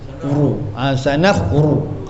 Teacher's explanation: Sanaf ru. Jangan baca tipis ru. Mesti penuh mulut. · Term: tebal